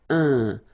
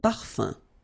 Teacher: So it's nasal and it's un. So it really goes in your nose. You don't pronounce the M at all.